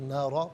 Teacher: یہاں وقف پڑھیں گے تو نارا پڑھیں گے